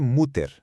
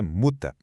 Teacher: quando aparecer um er no final de uma palavra em alemão, pode esquecer aquele som de er que a gente tá acostumado. Pensa num som de a, mas um a bem curtinho, bem suave.